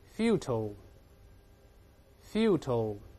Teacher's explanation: 甚至读快了之后，这个▁t▁会轻轻的浊化成▁d▁的声音